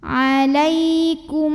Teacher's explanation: karena ada mim sukun yang dihadapannya bertemu dengan huruf mim maka cara baca mim sukunnya adalah lebur atau masuk ke mim kedua sambil dengung jadi bunyi m nya tahan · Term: idgham mimi